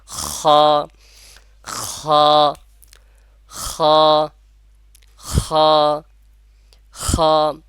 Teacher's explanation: গলার শুরু থেকে বা কণ্ঠনালীর শুরু থেকে উচ্চারণ হবে